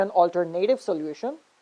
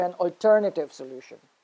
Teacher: i just transferred the stress from third to the second syllable